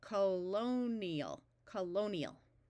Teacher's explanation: This I is going to have a long E sound most of the time